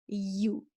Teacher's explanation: If you are saying it correctly, for ya dhamma, you can feel your tongue is being almost touching the roof of the mouth, but you can feel the air in between the tongue and the roof.